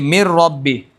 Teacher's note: مر ربی کے اندر نون ساکن کی وجہ سے ادغام پایا جاتا ہے